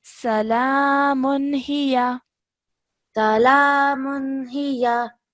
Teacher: make sure not to elongate the ya sound out for too long. It's just a simple fatha